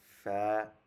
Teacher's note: 14 নম্বর মাখরাজ নিচের ঠোঁটের পেট উপরের দুই দাঁতের গোড়া আগার সাথে লাগিয়ে